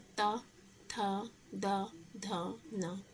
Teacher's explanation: दंत में आता है ता। मतलब कि जो दांत होते हैं वह जीभ में टच होते हैं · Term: दंतीय व्यंजन